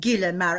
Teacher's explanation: It doesn't have that softening on it. It's just gilhamar, an ordinary G